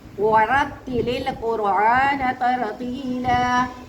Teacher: جب ہم نے واو بولا ہمارا منہ گول ہوا، جب ہم نے تا بولا ہماری زبان جو ہے وہ دانتوں سے ٹکرائی، جب ہم نے یا بولا ہماری زبان جو ہے اس کا درمیان والا حصہ بولا، ٹھیک ہے. جب ہم نے لام بولا تو ہم نے طرفیہ کو سائڈوں کو لگایا، ٹھیک ہے. اس طرح سے ہم نے پورے مخرج کے ساتھ ایک کلمہ بنایا.